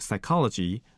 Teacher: the most well-known example is psychology where P was not pronounced but spelled out